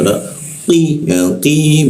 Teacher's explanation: qi di siku tenggorokan lidahnya dinaikkan rongga udara terkunci sehingga tidak ada aliran